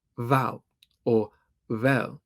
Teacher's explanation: a complex merger between v and w in Bermudian English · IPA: /βæl/ or /βɛ(j)əl/, /βæl/